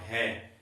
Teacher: है का जो उच्चारण है वो जड़ भाग से अधिक होता है, इसलिए इस ध्वनि को काकल्य ध्वनि भी कहा जाता है।